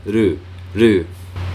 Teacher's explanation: the sound is made by the process of making the R sound without really touching the tongue to the top of your mouth